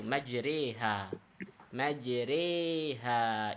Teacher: Kalau dilihat dari segi harokat berarti imalah fathah ke kasrah.